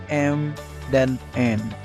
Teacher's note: bunyi yang dihasilkan dengan udara lewat rongga hidung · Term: bunyi nasal